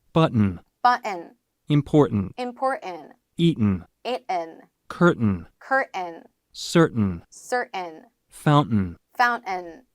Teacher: 뒤에 들어가 있는 이 소리를 약간 콧소리로 바꿔주시면 돼요. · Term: mountain 유형